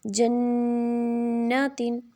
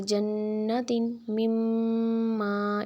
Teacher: ہم نون پہ تو ناک میں آواز جاتی ہے اور ایک الف کے برابر ہی اس کو ہم پڑھتے ہیں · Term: غنہ